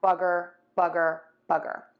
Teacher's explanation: some people might say bugger if they completely have the mouth 100% relaxed with no rounding. So the slight rounding for this sound is really important as opposed to the which is 100% relaxed, no tension at all, no just opening your mouth for that bugger, bugger, bugger.